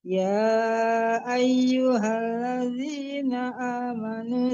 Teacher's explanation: Membaca alif itu harus jelas, jangan yai, tapi ya ai harus jelas a-nya ya Bu, jangan yai ya.